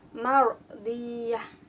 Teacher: Lalu di sini ada hukum bacaan ro tafkhim lagi karena ada huruf ro sukun yang didahului oleh huruf berharokat fathah. Jadi dibacanya tebal atau tafkhim.